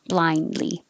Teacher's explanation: the n the d and the l are all made in the same place your tongue is behind your top teeth so once you put it there for the n blind li